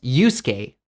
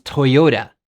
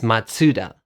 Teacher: it's important to put the emphasis on the second to last syllable